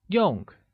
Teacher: The word use or function translates as 用, which is pronounced using a falling tone